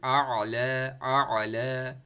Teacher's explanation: अब देखें ना, आला में एक आ रहा है, हमज़ा आ रहा है, जिसपे आपकी आवाज़ बिल्कुल रुक रही है, स्टॉप कर रही है, वो हमज़ा होता है।